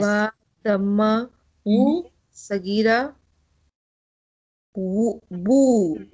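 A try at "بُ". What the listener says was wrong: Bu, yes.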